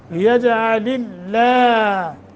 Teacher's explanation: ہم نے ادغام تو کیا ہے مگر بغیر غنہ یجعل اللہ لفظ اللہ کو باریک پڑھیں گے ما قبل کسرہ کی وجہ سے